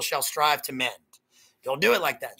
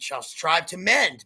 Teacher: end the line on an up note. Don't end the line on a down note.